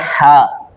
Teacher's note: حلق کے منہ کی جانب والے حصے سے ادا ہوتا ہے. حلق منہ کے، حلق کے منہ کے جانب والے حصے سے ادا ہوتا ہے.